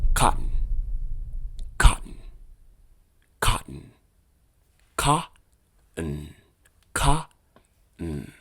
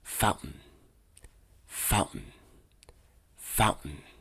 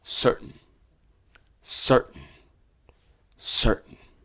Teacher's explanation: Avoid making the T sound very crisp when it comes to the glottal stop. Focus on the pause instead.